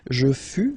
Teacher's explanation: keep in mind that final S is not pronounced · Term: final S not pronounced